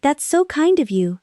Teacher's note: Make it warm and rising.